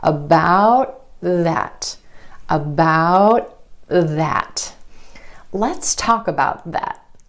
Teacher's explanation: The tongue tip stays up for the T and goes straight into the TH sound. The tongue tip goes under the front teeth for the TH sound. · For the held T, you just skip step 3. You hold the tip of your tongue against the ridge behind your top front teeth, and you don't release any air. Held T happens at the end of words in American English.